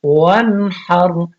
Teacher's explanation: نون ساکن، لیکن آگے حروف حلقی میں سے ہا آ گیا تو یہاں پہ غنہ نہیں کرے گی